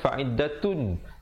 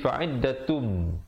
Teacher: Fa'iddatum, di situ didengungkan idgham bi gunnah, tanwin bertemu mim. Asalnya fa'iddatun, tapi di sini jadi fa'iddatum dengan kadar dengung 2 harakat.